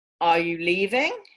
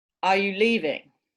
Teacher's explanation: the first one has a rising tone are you leaving the second one has a falling tone